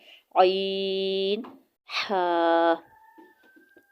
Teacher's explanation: حلق کے درمیان والے حصے سے ادا ہوتے ہیں۔ گلے کے درمیان سے یہ آواز نکالنی ہے